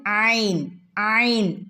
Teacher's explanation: തൊണ്ടയുടെ മധ്യഭാഗം, തൊണ്ടയുടെ നടുക്ക് നിന്നും വരുന്ന അക്ഷരാണ് ഐൻ ഐൻ. തൊണ്ടയുടെ മധ്യഭാഗത്ത് നിന്ന്, തൊണ്ടയുടെ നടുക്ക് നിന്നും വരുന്ന അക്ഷരാണ് ഐൻ.